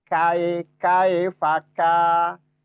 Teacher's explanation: suara samar dan suara dengungnya berimbang ya dan ditahan kae kae faka dan dua harakatnya konsisten. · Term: ikhfa ausat